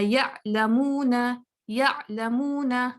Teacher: عین جلدی چھوڑوں گی تو کیا ہوگا؟ وہ حمزہ ساکنہ پہ چلا جائے گا. جیسے ہم اکثر دیکھتے ہیں جو بگنر ریڈرز ہیں وہ کیا کرتے ہیں یعلمون یعلمون، چونکہ ان کی آئین کی اتنی پریکٹس نہیں ہوتی. · वो कटिंग साउंड हो जाती है, जल्दी आवाज बंद कर दी, आइन को पूरा खींचा नहीं। आपको पता है रखावा में हम आवाज को खींचते हैं, लंबा कर सकते हैं जितना चाहें, तो आइन बिटवीन रखावा और शिद्दा है, तो हमने इसको थोड़ा टाइम देना है, ठीक है।